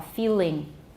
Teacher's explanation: Feeling, because of the vowel that comes after the L, it's a clear L. Feeling. Or could be dark plus a clear L.